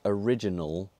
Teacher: the air escapes over both sides of the tongue and that makes it a lateral sound · So, as I mentioned, we articulate L in the same place that we articulate N. So, in a word like original, there's a way of moving from N to L without taking the tongue off the mouth completely